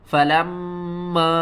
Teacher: یہاں پر میم مشدد ہے، اس کے اوپر آپ نے ہر حال میں غنہ کرنا ہے